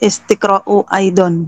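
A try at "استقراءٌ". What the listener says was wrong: tanwin Bu, harus tanwin Bu.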